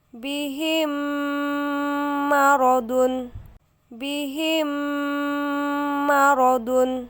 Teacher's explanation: dibaca sambil didengungkan serta ditahan sekitar 2/3 harokat sebelum menyebut jelas huruf mim berharokat di depannya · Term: idgham mimi